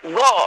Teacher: ग में गंभीरता आ गई तो घोष हुआ ना?